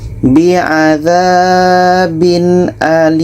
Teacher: adalah izhar halq izhar halq tadi adalah jelas apa Yang jelas tanwin jelas Hamzah jelas dan tidak ada dengung